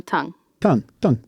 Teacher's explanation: the T on tongue is what we call dentalized okay we go t t t so your teeth come down